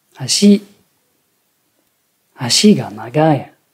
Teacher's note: L'accent est en fin de mot et il y a une chute brutale après, ce qui donne une prononciation basse, haute, basse.